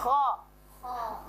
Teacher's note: istilla itu cara membacanya ee pangkal lidahnya diangkat sampai ke langit-langit